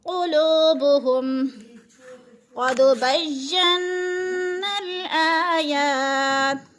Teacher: क़ुलूबुहुम क़द बय्यन्नल आयात, क़द को पुर पढ़ा जाएगा, क़ाफ मोटे हरूफ में से है, इसलिए क़ाफ को पुर पढ़ा जाएगा। और दाल को हिलाकर पढ़ेंगे, क्योंकि दाल हरूफे क़लक़ला में से है